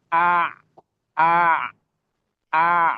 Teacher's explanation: Mengalir ya suaranya ketika disukun ya. Ketika dia berharokat sukun, nah dia suaranya mengalir. Namun mengalirnya sedikit aja. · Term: sifat bainiyah